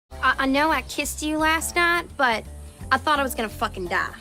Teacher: the words night and die are typically said using diphthongs but here Julia Garner turns them into a mob thong to sound more like not and da let's listen to the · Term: monophthong